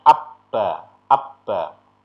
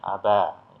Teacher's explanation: seolah-olah huruf ba-nya itu menjadi double. Ba yang pertama itu dimatikan atau diberi seperti seolah-olah seperti tanda sukun. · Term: bunyi double